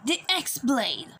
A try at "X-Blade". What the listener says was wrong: It still sounds like you're saying Keyblade.